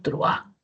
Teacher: Entonces parece que fueran dos, pero en realidad no lo hay porque la mayor fuerza de voz de la vocal abierta hace que la vocal cerrada se una en un diptongo. Si es que no tuviera la mayor fuerza de voz la vocal abierta, entonces ahí sí se separarían en dos sílabas.